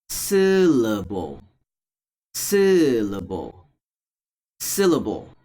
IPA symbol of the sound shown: ə